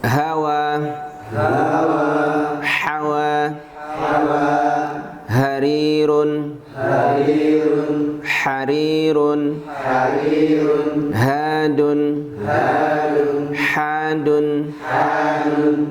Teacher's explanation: Semua sifatnya hamas, dengan hawa, diucapkannya dengan hawa, dengan udara, dengan nafas.